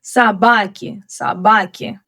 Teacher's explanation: Also, there is a reduced O in the word собаки. So here the stress falls on A, so O is reduced and also pronounced as A.